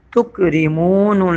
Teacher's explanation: میم واو پیش مو کھینچ کے پڑھیں گے، پیش کے بعد جزم والا واو ہے. تکریمون لام زبر نل.